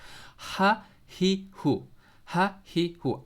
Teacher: حمزہ اور ہا کا جو نکلنے کی جو جگہ ہے نا وہ ہمارا یہ حصہ ہے، یعنی تھروٹ کے آپ کے آخری حصہ جو سب سے نیچے ہیں اس کو کہتے ہیں آپ لوئر تھروٹ کہہ سکتے ہیں آپ انگلش میں، ٹھیک ہے؟